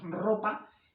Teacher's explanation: esta R, aunque solo es una, como está inicio de palabra, tiene sonido, lo que llamamos sonido fuerte, es vibrante múltiple, no vibrante simple